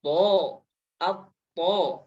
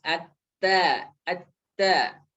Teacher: Isti'la huruf to adalah dibaca tebal. To, to. Adapun ta dia tipis.